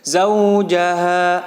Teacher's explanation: di situ zaujaha ada fathah yang diikuti waw sukun, maka ditekan membacanya, bukan panjang lagi. Zau ditekan.